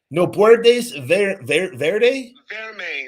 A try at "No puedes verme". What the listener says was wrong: Verme with an M.